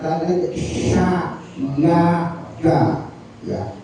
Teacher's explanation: Sya beda dengan si jangan walau sa sya itu di batang lidah kita sentuhkan